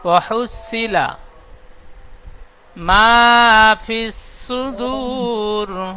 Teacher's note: ওয়াহুসি বলে টান দিচ্ছেন, সি টান হবে না, সজ্জের সি।